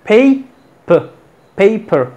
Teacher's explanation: Tenemos aquí una schwa. La schwa, sílaba átona, es como así. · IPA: /peɪpər/